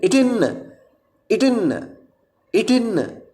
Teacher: இட் இன் ஆகிய இரு மெய்களும் நாவின் நுனி அண்ணத்தின் நுனியை பொருந்துவதால் பிறக்கும்